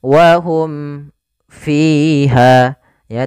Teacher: Bukan ikhfa syafawi tapi izhar syafawi. Jelas suara mimnya dan tidak boleh ditahan.